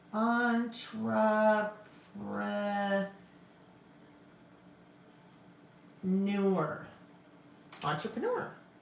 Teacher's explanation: Again, it's that getting that R in there, like February. We tend to want to drop that second R.